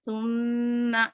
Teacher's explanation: میم مشدد ہے تو اپنے اچھے سے غنہ کر کے چلنا ہے